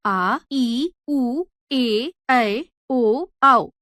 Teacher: दूसरा दीर्घ स्वर। इन स्वरों को बोलने में ह्रस्व स्वरों की अपेक्षा दो गुना समय अर्थात दो मात्रा का समय लगता है।